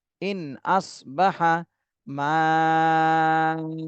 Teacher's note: ইন নুন সাকিনের পরে ইজহারের হরফ, এজন্য এই নুন সাকিনে স্পষ্ট করে পড়তে হবে। ইন আসবাহা, ইন আসবাহা মাউকুম, মাতে 4 আলিফ টান দিতে হবে, উকুম।